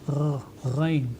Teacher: Rain qui est prononcée dans cette partie de la gorge, au fond de la gorge